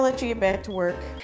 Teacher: only be pronounced one time let you get back to work the c or K in back is unreleased as it transitions to the next stop consonant T in two this means there is not released between the two sounds back